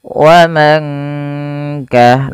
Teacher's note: nun sukun bertemu kaf dibaca dengan ikhfa hakiki, yaitu dibaca samar suara nunnya ketika bertemu dengan kaf. Wa man ka langsung menyamarkannya atau dengungkannya ke huruf kafnya.